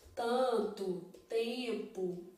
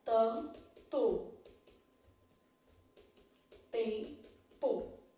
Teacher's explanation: dos seus dígrafos dígrafos vocálicos obviamente vão ter som de vogal dígrafos vocálicos vão ser formados por vogal mais m ou n um som nasal